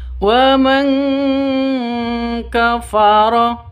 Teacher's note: Nun mati bertemu dengan kaf. Cara bacanya samar didengungkan. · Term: ikhfa hakiki